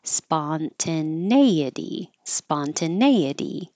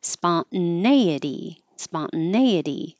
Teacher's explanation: you can keep the T in the middle or you can drop the T and make a syllabic N.